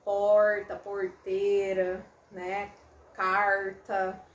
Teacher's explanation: ele se chama retroflexo porque o meu articulador ativo, a minha língua, ela dobra para trás, ela retroflete, né? Ela vai para trás, ela faz uma dobrinha, e aí seria um R aproximado daquele que se usa no inglês, né? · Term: R retroflexo